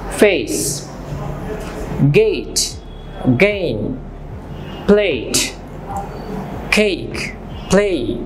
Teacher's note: এ এবং ই, এই দুটো সাউন্ড মিশে একত্রিত হয়ে তৈরি হচ্ছে এই। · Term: diphthong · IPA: /eɪ/